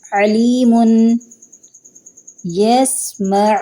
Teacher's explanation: ان کا مخرج وسط حلق یعنی گلے کے درمیانی حصے میں ہے۔ عین کو ادا کرتے وقت آواز گلے سے جھٹکے کے ساتھ نکلتی ہے۔